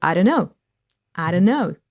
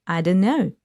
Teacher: So T will be dropped, right? So only N will be left.